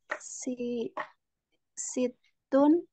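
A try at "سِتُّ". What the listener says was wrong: tanpa tanwin.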